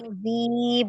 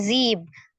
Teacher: Ujung lidah ada di ujung gigi seri bagian atas.